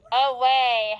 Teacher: So that first syllable is going to be a schwa